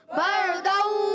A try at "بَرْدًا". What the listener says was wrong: بر را کو پر کرنا ہے، بردا بردا بردوں میں ایک الف کا غنہ بھی کریں گے.